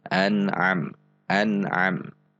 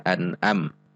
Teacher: Sehingga usahakan meskipun kita belum fasih pada titik ain, namun setidak-tidaknya usahakan bahwa bacaan kita itu tidak sama persis dengan hamzah, namun ada usaha yang kuat untuk membacanya di tengah tenggorokan atau di titik makhraj ain